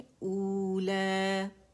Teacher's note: او کی آواز اقصى الحلق سے آئے گی، الجوف سے نہیں